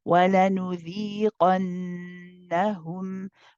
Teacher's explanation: With the noon, you have akmal gunna, so you prolong this part.